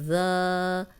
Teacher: ज़ाल ज़बर अलिफ ज़ा, अलिफ मद्दा 2 हरकत लंबा करेंगे, खाली अलिफ पीछे ज़बर, लेकिन ज़ाल को नरम भी पढ़ेंगे, सीटी की आवाज़ नहीं आएगी